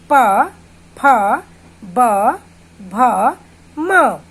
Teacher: प वर्ग में हमारे 2 होंठ आपस में इन वर्णों को जब बोलेंगे तो आपस में मिलेंगे। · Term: ओष्ठ्य